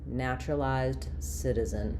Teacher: you're going to be stressing on the na of naturalized and the si of citizen.